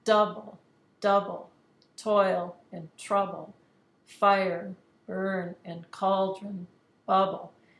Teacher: It's just the opposite of iambic pentameter. You can hear that the stressed syllable now is coming first. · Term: trochee